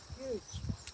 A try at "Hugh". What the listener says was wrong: H-U-G-H. That's not huge. H-U-G-E is huge. Hugh. That's like short for Huey.